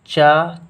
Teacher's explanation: चा जो होता है वह अघोष अल्पप्राण होता है।